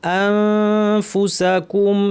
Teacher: নুন সাকিন ফা ইখফা করতে হবে, দাঁত ঠোঁটের উপরে এনে ফা বলার জন্য মুখ রেডি, নাক থেকে গুন্না।